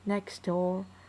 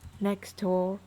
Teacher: like here we can see the elision, right? Next door. Okay, elision of T